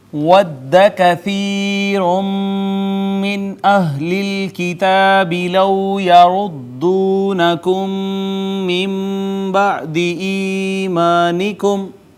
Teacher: میم ساکن کے بعد دوسری میم ادغام شفوی